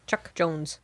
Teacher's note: Chuck Jones, great glottal stops in his name